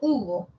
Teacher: la vocal u también es alta pero posterior